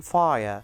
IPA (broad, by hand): faɪə